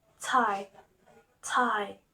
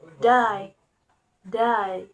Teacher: T and D are distinguished by voicing, with T being voiceless and D is voiced. They are articulated at the alveolar place, with the tongue touching the area behind the upper teeth.